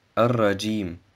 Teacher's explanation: Das Alif und das Lam im Wort Ar-Rajim werden nicht ausgesprochen. Das Ja im Wort Ar-Rajim wird 3 bis 5 Harakat verlängert. Die Lautbildung des Ja entsteht zwischen dem oberen Gaumen und dem Zungenblatt.